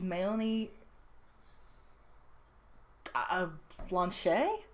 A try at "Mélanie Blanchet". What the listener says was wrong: No, you do pronounce the T. No, it is that, yeah.